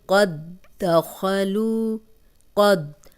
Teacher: شد والے حرف سے پیچھے جو جزم والا حرف ہے وہ ڈیڈ ہو جاتا ہے، اس کی بالکل بھی آواز نہیں آتی۔ جیسے یہ دیکھیں، قد دخلوا، قد، اب قد جو ہے 3 دال آ گئے ہیں، کیونکہ شد والا حرف 2 بار پڑھا جاتا ہے نا، تو یہ 2 بار تو یہ دال ہے اور ایک تیسرا دال جو ہے یہ جزم والا ہے، یہ بالکل پڑھنے میں نہیں آئے گا۔